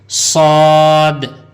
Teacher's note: صاد میں جیسے سیٹی کی آواز آنی چاہیے